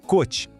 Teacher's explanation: som de O bem fechadinho